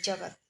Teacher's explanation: जगत में जब और त की तुलना में ग पर अधिक दिया जाता है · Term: बलाघात